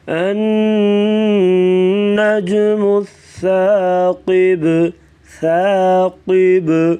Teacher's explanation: سا کو نرمی سے پڑھیں گے اور ثاقب کیونکہ جو با ہے ساکن ہوگی تو قلقلہ کریں گے